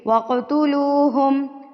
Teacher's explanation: قلقلہ کر کے پڑھنا ہوتا ہے، ہلا کے، تھر تھراہٹ سے، وائبریشن سے